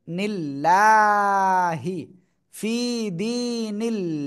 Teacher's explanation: দালিয়া জেরিফটান নুন লামের নিল লাম খাড়া জবর লা এই যে আল্লাহ শব্দের লাম না এর ডানে জের রয়েছে চিকুন করে পড়তে হবে